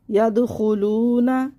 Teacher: دال پہ قلقلہ ہوگا